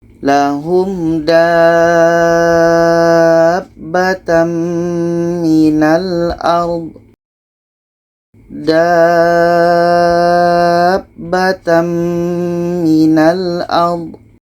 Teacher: Aallahu Seterusnya dalam ayat 82 surah An-Naml, di sini ada tanda mad bertemu dengan huruf yang ada tasjid, ini mad lazim kilmi mutsaqqal. Cara bacanya kita panjangkan da ini enam harakat baru masuk ke huruf yang ada tasjid.